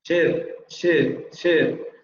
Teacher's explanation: Se escucha como si fuera una E, pero no lo es, ¿eh? O sea, no es nuestra E, está más adelante.